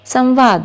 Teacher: जैसे सम जमा वाद संवाद। यहाँ पर म के बाद व यानी कि अंतस्थ व्यंजन आ गया है, इसलिए म का अनुस्वार हो जाएगा